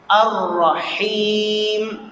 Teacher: ہا حلق سے صحیح ادا کرنی ہے